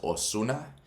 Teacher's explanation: You don't pronounce it Ozuna like a Z sound. It's like basically just an S.